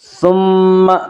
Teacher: ثم میم مشدد غنہ ہوگا، غنہ کی مقدار 1 الف ہے۔